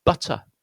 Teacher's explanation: Again, we've got that short U followed by a schwa sound. They sound the same, and The only difference is this is stressed, and this one isn't.